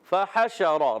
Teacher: शीन में एक सिफत पाई जाती है, उसका नाम है तफशी।